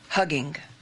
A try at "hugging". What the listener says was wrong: Hugging. Don't pronounce that second G.